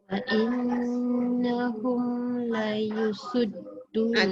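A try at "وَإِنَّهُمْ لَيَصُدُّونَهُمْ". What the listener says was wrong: Tu awak cakap la yusud. La ya.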